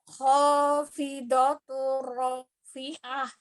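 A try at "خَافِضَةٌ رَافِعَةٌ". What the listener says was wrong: Ya, tebalkan di huruf dodnya. Bukan hopido. Jangan monyong do-nya, jangan monyong do, tapi do. Khafidho, do, khafidhatur. Ya, dibuka mulutnya.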